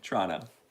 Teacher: There is a T sound that I'm making. Even when I'm trying to say ch, I'm making a T sound.